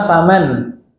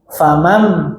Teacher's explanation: Tapi ketika baca bertemu dengan ba dirubah nunnya jadi mim. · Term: iqlab